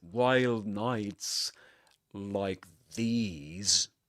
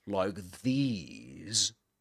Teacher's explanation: This is what's usually called as what's usually called as a full rise intonation, a full rise tone because the voice goes like this, like these. It goes up first, then it goes down and um and at the end it goes up again